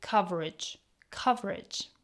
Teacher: In the word coverage, the e in the middle is often weakened to a schwa sound e, making it sound like coverage.